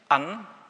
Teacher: Ich habe Ihnen zum Beispiel erklärt, dass man bei so Wörtern wie an, der Präposition an Weihnachten, wenn Sie das so sagen, da haben wir diesen glottalen Plosiv am Anfang, wenn wir das aussprechen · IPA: [ʔan]